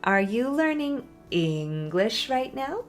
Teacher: it goes down on the important word English and then up to the end of the sentence. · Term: fall and then rise